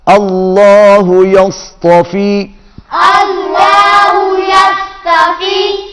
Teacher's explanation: اللہ کا لام موٹا صاد موٹا